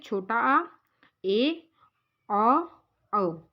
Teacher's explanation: जिन स्वरों के उच्चारण में मुख द्वार आधा खुलता है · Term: अर्धविवृत